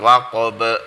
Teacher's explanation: ba juga termasuk huruf qalqalah, jadi dibaca memantul